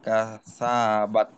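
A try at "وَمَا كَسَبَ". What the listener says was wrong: বাত, তা তো এখানে নেই। সাব, কাসাব, কাফ লম্বা করা যাবে না।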